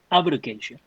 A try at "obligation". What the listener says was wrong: Actually, that sounds like you're sounding like the stress falls on the first section. 这样听起来有点是第一音节了哈，应该是前面是 obligation. Don't make it like obligation, communication, conversation. Actually, it's obligation, communication, conversation. 不是 conversation.